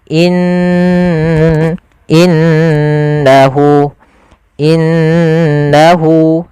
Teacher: Cara membacanya jangan langsung innahu tapi ditahan dulu ghunahnya. Dimasukkan ke rongga hidung kita.